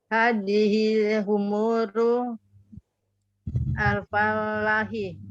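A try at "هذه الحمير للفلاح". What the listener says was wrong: Lil fallahi. Ahsantuna. Hadhil humuru lil fallahi. Ini ada huruf jarnya ya.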